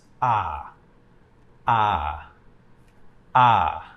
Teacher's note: the fourth tone is a falling tone so you start higher in your voice and you go down